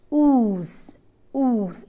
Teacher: oohs ooh it is not just rounded it is closely rounded the tongue is tense it is not relaxed it is tense this is a long vowel as you can see the symbol · a soft palate and it is in a closed position here during the articulation of this vowel the back of the tongue is raised to the closed position the lips are closely rounded just observe your lips when you articulate oohs ooh it is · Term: back close rounded